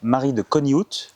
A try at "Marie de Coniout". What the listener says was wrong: Alors on prononce pas le T.